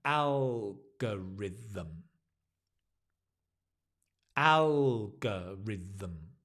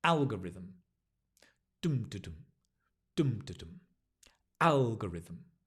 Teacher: notice the stress on the AL algorithm